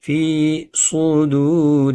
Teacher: صاد میں تھوڑی موٹی آواز رہے گی